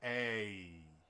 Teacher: Like in an American accent, the vowel a, uh, you start a and you end e, so it's a, and you have to move in the middle. That's called a diphthong.